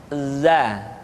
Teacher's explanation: Diucapkan dengan cara ujung lidah kita berada di antara dua gigi seri bagian atas dan bagian bawah. Za. menyerupai dengan pengucapan huruf Z di dalam huruf Latin. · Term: huruf za